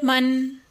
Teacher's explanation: Lesson number 6، تختی number 5، نون تنوین، دو زبر، دو زیر، دو پیش، ان کو کہتے ہیں تنوین۔ نون تنوین کی آواز نون میں بدل جاتی ہے اور ناک میں چلی جاتی ہے